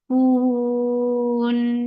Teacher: Give tawassut on noon because of this waqf. Because of this waqf, you are giving sukoon on noon. This temporary sukoon has turned this 2 counts long vowel into 4. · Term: madarat lis sukoon